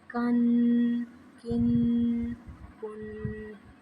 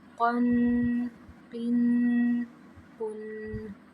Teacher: کاف اور یہ قاف دونوں میں فرق کر کے پڑھیں گے۔ پہلے والے کاف کو باریک اور دوسرے کو پر کر کے پڑھیں گے